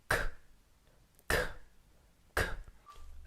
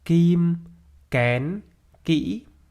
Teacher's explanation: the 'k' sound is a back sound so back of your tongue presses up against the soft palate and your tongue should be tense and hard and the 'k' sound is a stop sound so you push